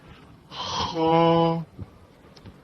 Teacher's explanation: خا کی ادائیگی کے لیے پہلے ہلکا سا گلے میں خراش جیسے فیل کرتے ہیں